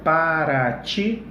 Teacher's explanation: para ti é uma palavra oxítona? É, o ti é mais forte